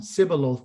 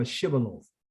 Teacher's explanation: part of Israel would say the Shin as an S sound